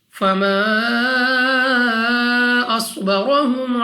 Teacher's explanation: صاد مستعلیہ میں سے ہے، موٹا پڑھیں گے. را پر زبر را کو پور یعنی موٹا پڑھیں گے.